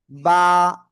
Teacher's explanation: এই যে দুই ঠোঁট, দুই ঠোঁটের ভিতরের অংশ, ভিজা অংশ থেকে আমরা উচ্চারণ করব। বা এক আলিফ টান হবে · এই অক্ষরটার নাম সবাই খেয়াল করবেন, আমি বলছি কোন জায়গা থেকে উচ্চারিত হবে আগে সেটা বলি। এই যে দুই ঠোঁট, দুই ঠোঁটের ভিতরের অংশ, ভিজা অংশ থেকে আমরা উচ্চারণ করব।